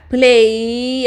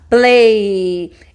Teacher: Al final el sonido es sonoro. Play. Tócate, tócate.